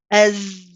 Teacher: You hear the Z, the buzzing type of sound. It's the sound of my voice.